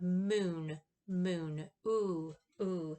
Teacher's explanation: It's high. Your tongue position is high, close to the roof of your mouth, and then it's back and it's tense and rounded. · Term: lowercase u